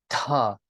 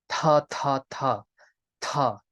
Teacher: you bite your tongue and you say the Tha sound but you kind of spit at the same time you get that air puff that puff of air out of your mouth lots of power in that sound ta next letter if you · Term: aspirated variant